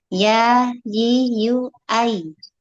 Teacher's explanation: huruf ya makhrajnya tengah lidah mengarah pada langit-langit mulut juga seperti syin